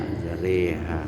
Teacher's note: Imalah, yaitu memiringkan bunyi fathah pada kasrah.